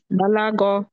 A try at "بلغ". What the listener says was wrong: বালাগ, গাইনটা উচ্চারণ হয় না, বালাগ, গ গ বালাগ।